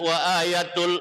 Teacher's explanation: hukumnya namanya idgham bila gunna. Artinya masuk tanpa dengung, hurufnya ada dua, yaitu ro dan la.